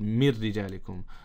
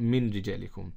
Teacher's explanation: the nun sakin completely joins with the ra, so we don't read the nun sakin at all anymore. We don't read it at all, because the nun sakin is now joined with the ra. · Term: idgham bila ghunna